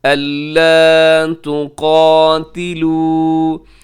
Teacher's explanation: یہاں قاف بھی موٹا ہے اور اسے وقف کرتے ہوئے بھی آپ نے لمبا کرنا ہے کیونکہ آخر میں واو مدہ ہے ، الا تقاتلوا، اور حروف مدہ پہ وقف ہو رہا ہے